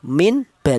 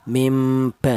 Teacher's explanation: Karena non mati ini berjumpa dengan huruf ba, maka cara bacanya dibaca iklab, yaitu nunnya mati diganti dengan huruf mim ba ya. Adapun diganti dengan huruf mim kecil ini itu hanya cara bacanya saja ya, mim ba seperti itu.